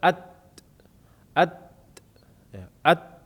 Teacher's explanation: Ujung lidah bertemu dengan pangkal gigi seri atas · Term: makhraj huruf ta